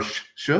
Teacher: when you're learning Portuguese, everybody, all the S's almost are sh sh sounds